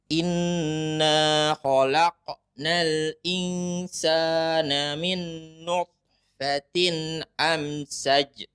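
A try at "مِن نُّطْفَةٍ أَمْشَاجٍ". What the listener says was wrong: Panjang, amsyaj.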